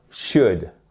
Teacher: vous mettez un ou court